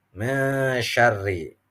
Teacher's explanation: Artinya samar ya. Mesyarri, nunnya samar karena masuk kepada shin. Lalu ada ro berharokat kasroh. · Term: ikhfa